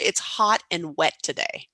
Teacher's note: you notice the T's almost kind of disappear